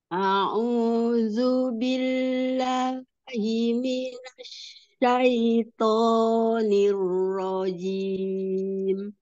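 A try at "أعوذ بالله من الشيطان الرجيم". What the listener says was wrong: Bilangnya jangan ada gede, jangan ada jeda. Billahi.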